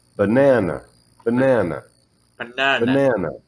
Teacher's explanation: the first A and the last A, if you listen to how I say them, it's not easy to hear them. They're not as strong as the middle A. I reduce the sounds of them to build the word.